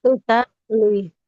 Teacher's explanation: Huruf H-nya di tengah-tengah tenggorokan.